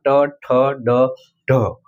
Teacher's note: ઉપલુતાળું ત્યાં જીભ રહીને આ વર્ણ બોલાય છે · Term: મૂર્ધન્ય